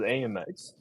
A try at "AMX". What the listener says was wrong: AMX. Well, it's I think it's more syllables the way you say it. AMX. Yeah, you got an extra syllable.